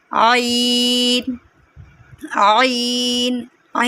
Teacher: आइन के लिए हम अपना हलक से आवाज़ निकालेंगे। इसके लिए हम अपनी गर्दन के बीच में उंगली रखेंगे और इसे अंदर की तरफ दबाएंगे तो हमारा आइन निकलेगा।